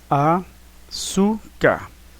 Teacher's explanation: açúcar também é paroxítona, que o su é a sílaba tônica